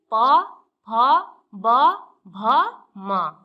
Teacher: दोनों होठों के स्पर्श से बोले जाने वाले वर्ण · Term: ओष्ठ